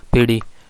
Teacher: ठ साउंड आमतौर पर वॉइसलेस है लेकिन ये वॉइस बन जाता है